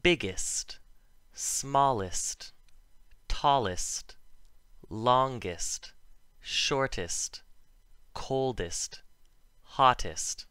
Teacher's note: EST, at the end of a word, if it's the suffix, sounds like IST, not EST. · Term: suffix EST